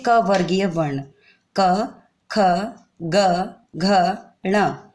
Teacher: जिन वर्णों को उच्चरित करते समय मुख से निकलने वाली वायु कंठ को स्पर्श करते हुए निकलती है, वे कंठ्यवर्ण कहलाते हैं।